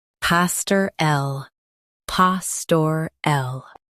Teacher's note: Stress pa and soften stir and l.